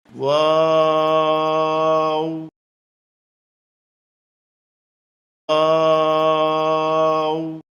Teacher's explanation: 2 ঠোঁট গোল করে শুরু হবে, 2 ঠোঁট গোল হয়ে শেষ হবে, মাঝে কিছু টাইম মুখ খুলে থাকবে।